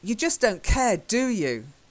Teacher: Okay, the do is really emphasized.